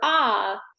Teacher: we have root retraction and we have a low tongue body